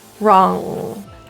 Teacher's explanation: But in North American English pronunciation, this nasal sound is not fully released generally. So wrong is pronounced with the back of your tongue right up to the roof of your mouth. The air is coming out of your nose. · So wrong is pronounced with the back of your tongue right up to the roof of your mouth. The air is coming out of your nose. If you plugged your nose, the voice or sound would stop. That's how you know you're creating a nasal sound. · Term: NG sound